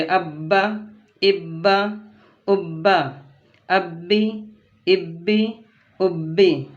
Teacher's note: با کو پڑھنے میں ایک قسم کی سختی ہو رہی ہے، اور تشدید ہونے کی وجہ سے با کو 2 مرتبہ پڑھیں گے، اور اس میں کسی کو کھینچ کر نہیں پڑھیں گے، مد نہیں کریں گے، اس لیے کہ حروف مدہ میں سے کچھ بھی نہیں ہے۔